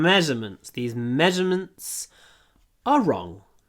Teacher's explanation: Ударение на ме, поэтому удлиняем м.